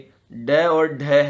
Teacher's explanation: ड और ढ है, जो कि मूर्धन्य व्यंजन है।